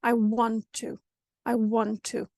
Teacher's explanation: two consonants that are exactly the same it's only natural we're going to combine it into one consonant but just longer sound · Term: twin sounds